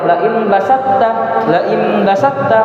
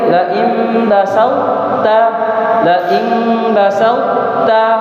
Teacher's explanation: Laim yang benar itu laim basauta, laim basauta. Tetap ada tinggal sedikit sifat dari huruf to. Sifat dari huruf to tanpa dikolkolahkan. Tapi dengan itu kita tahu bilang oh ada huruf to di situ.